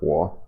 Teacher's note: it'll be something like wa rather than the full kind of length of the third tone.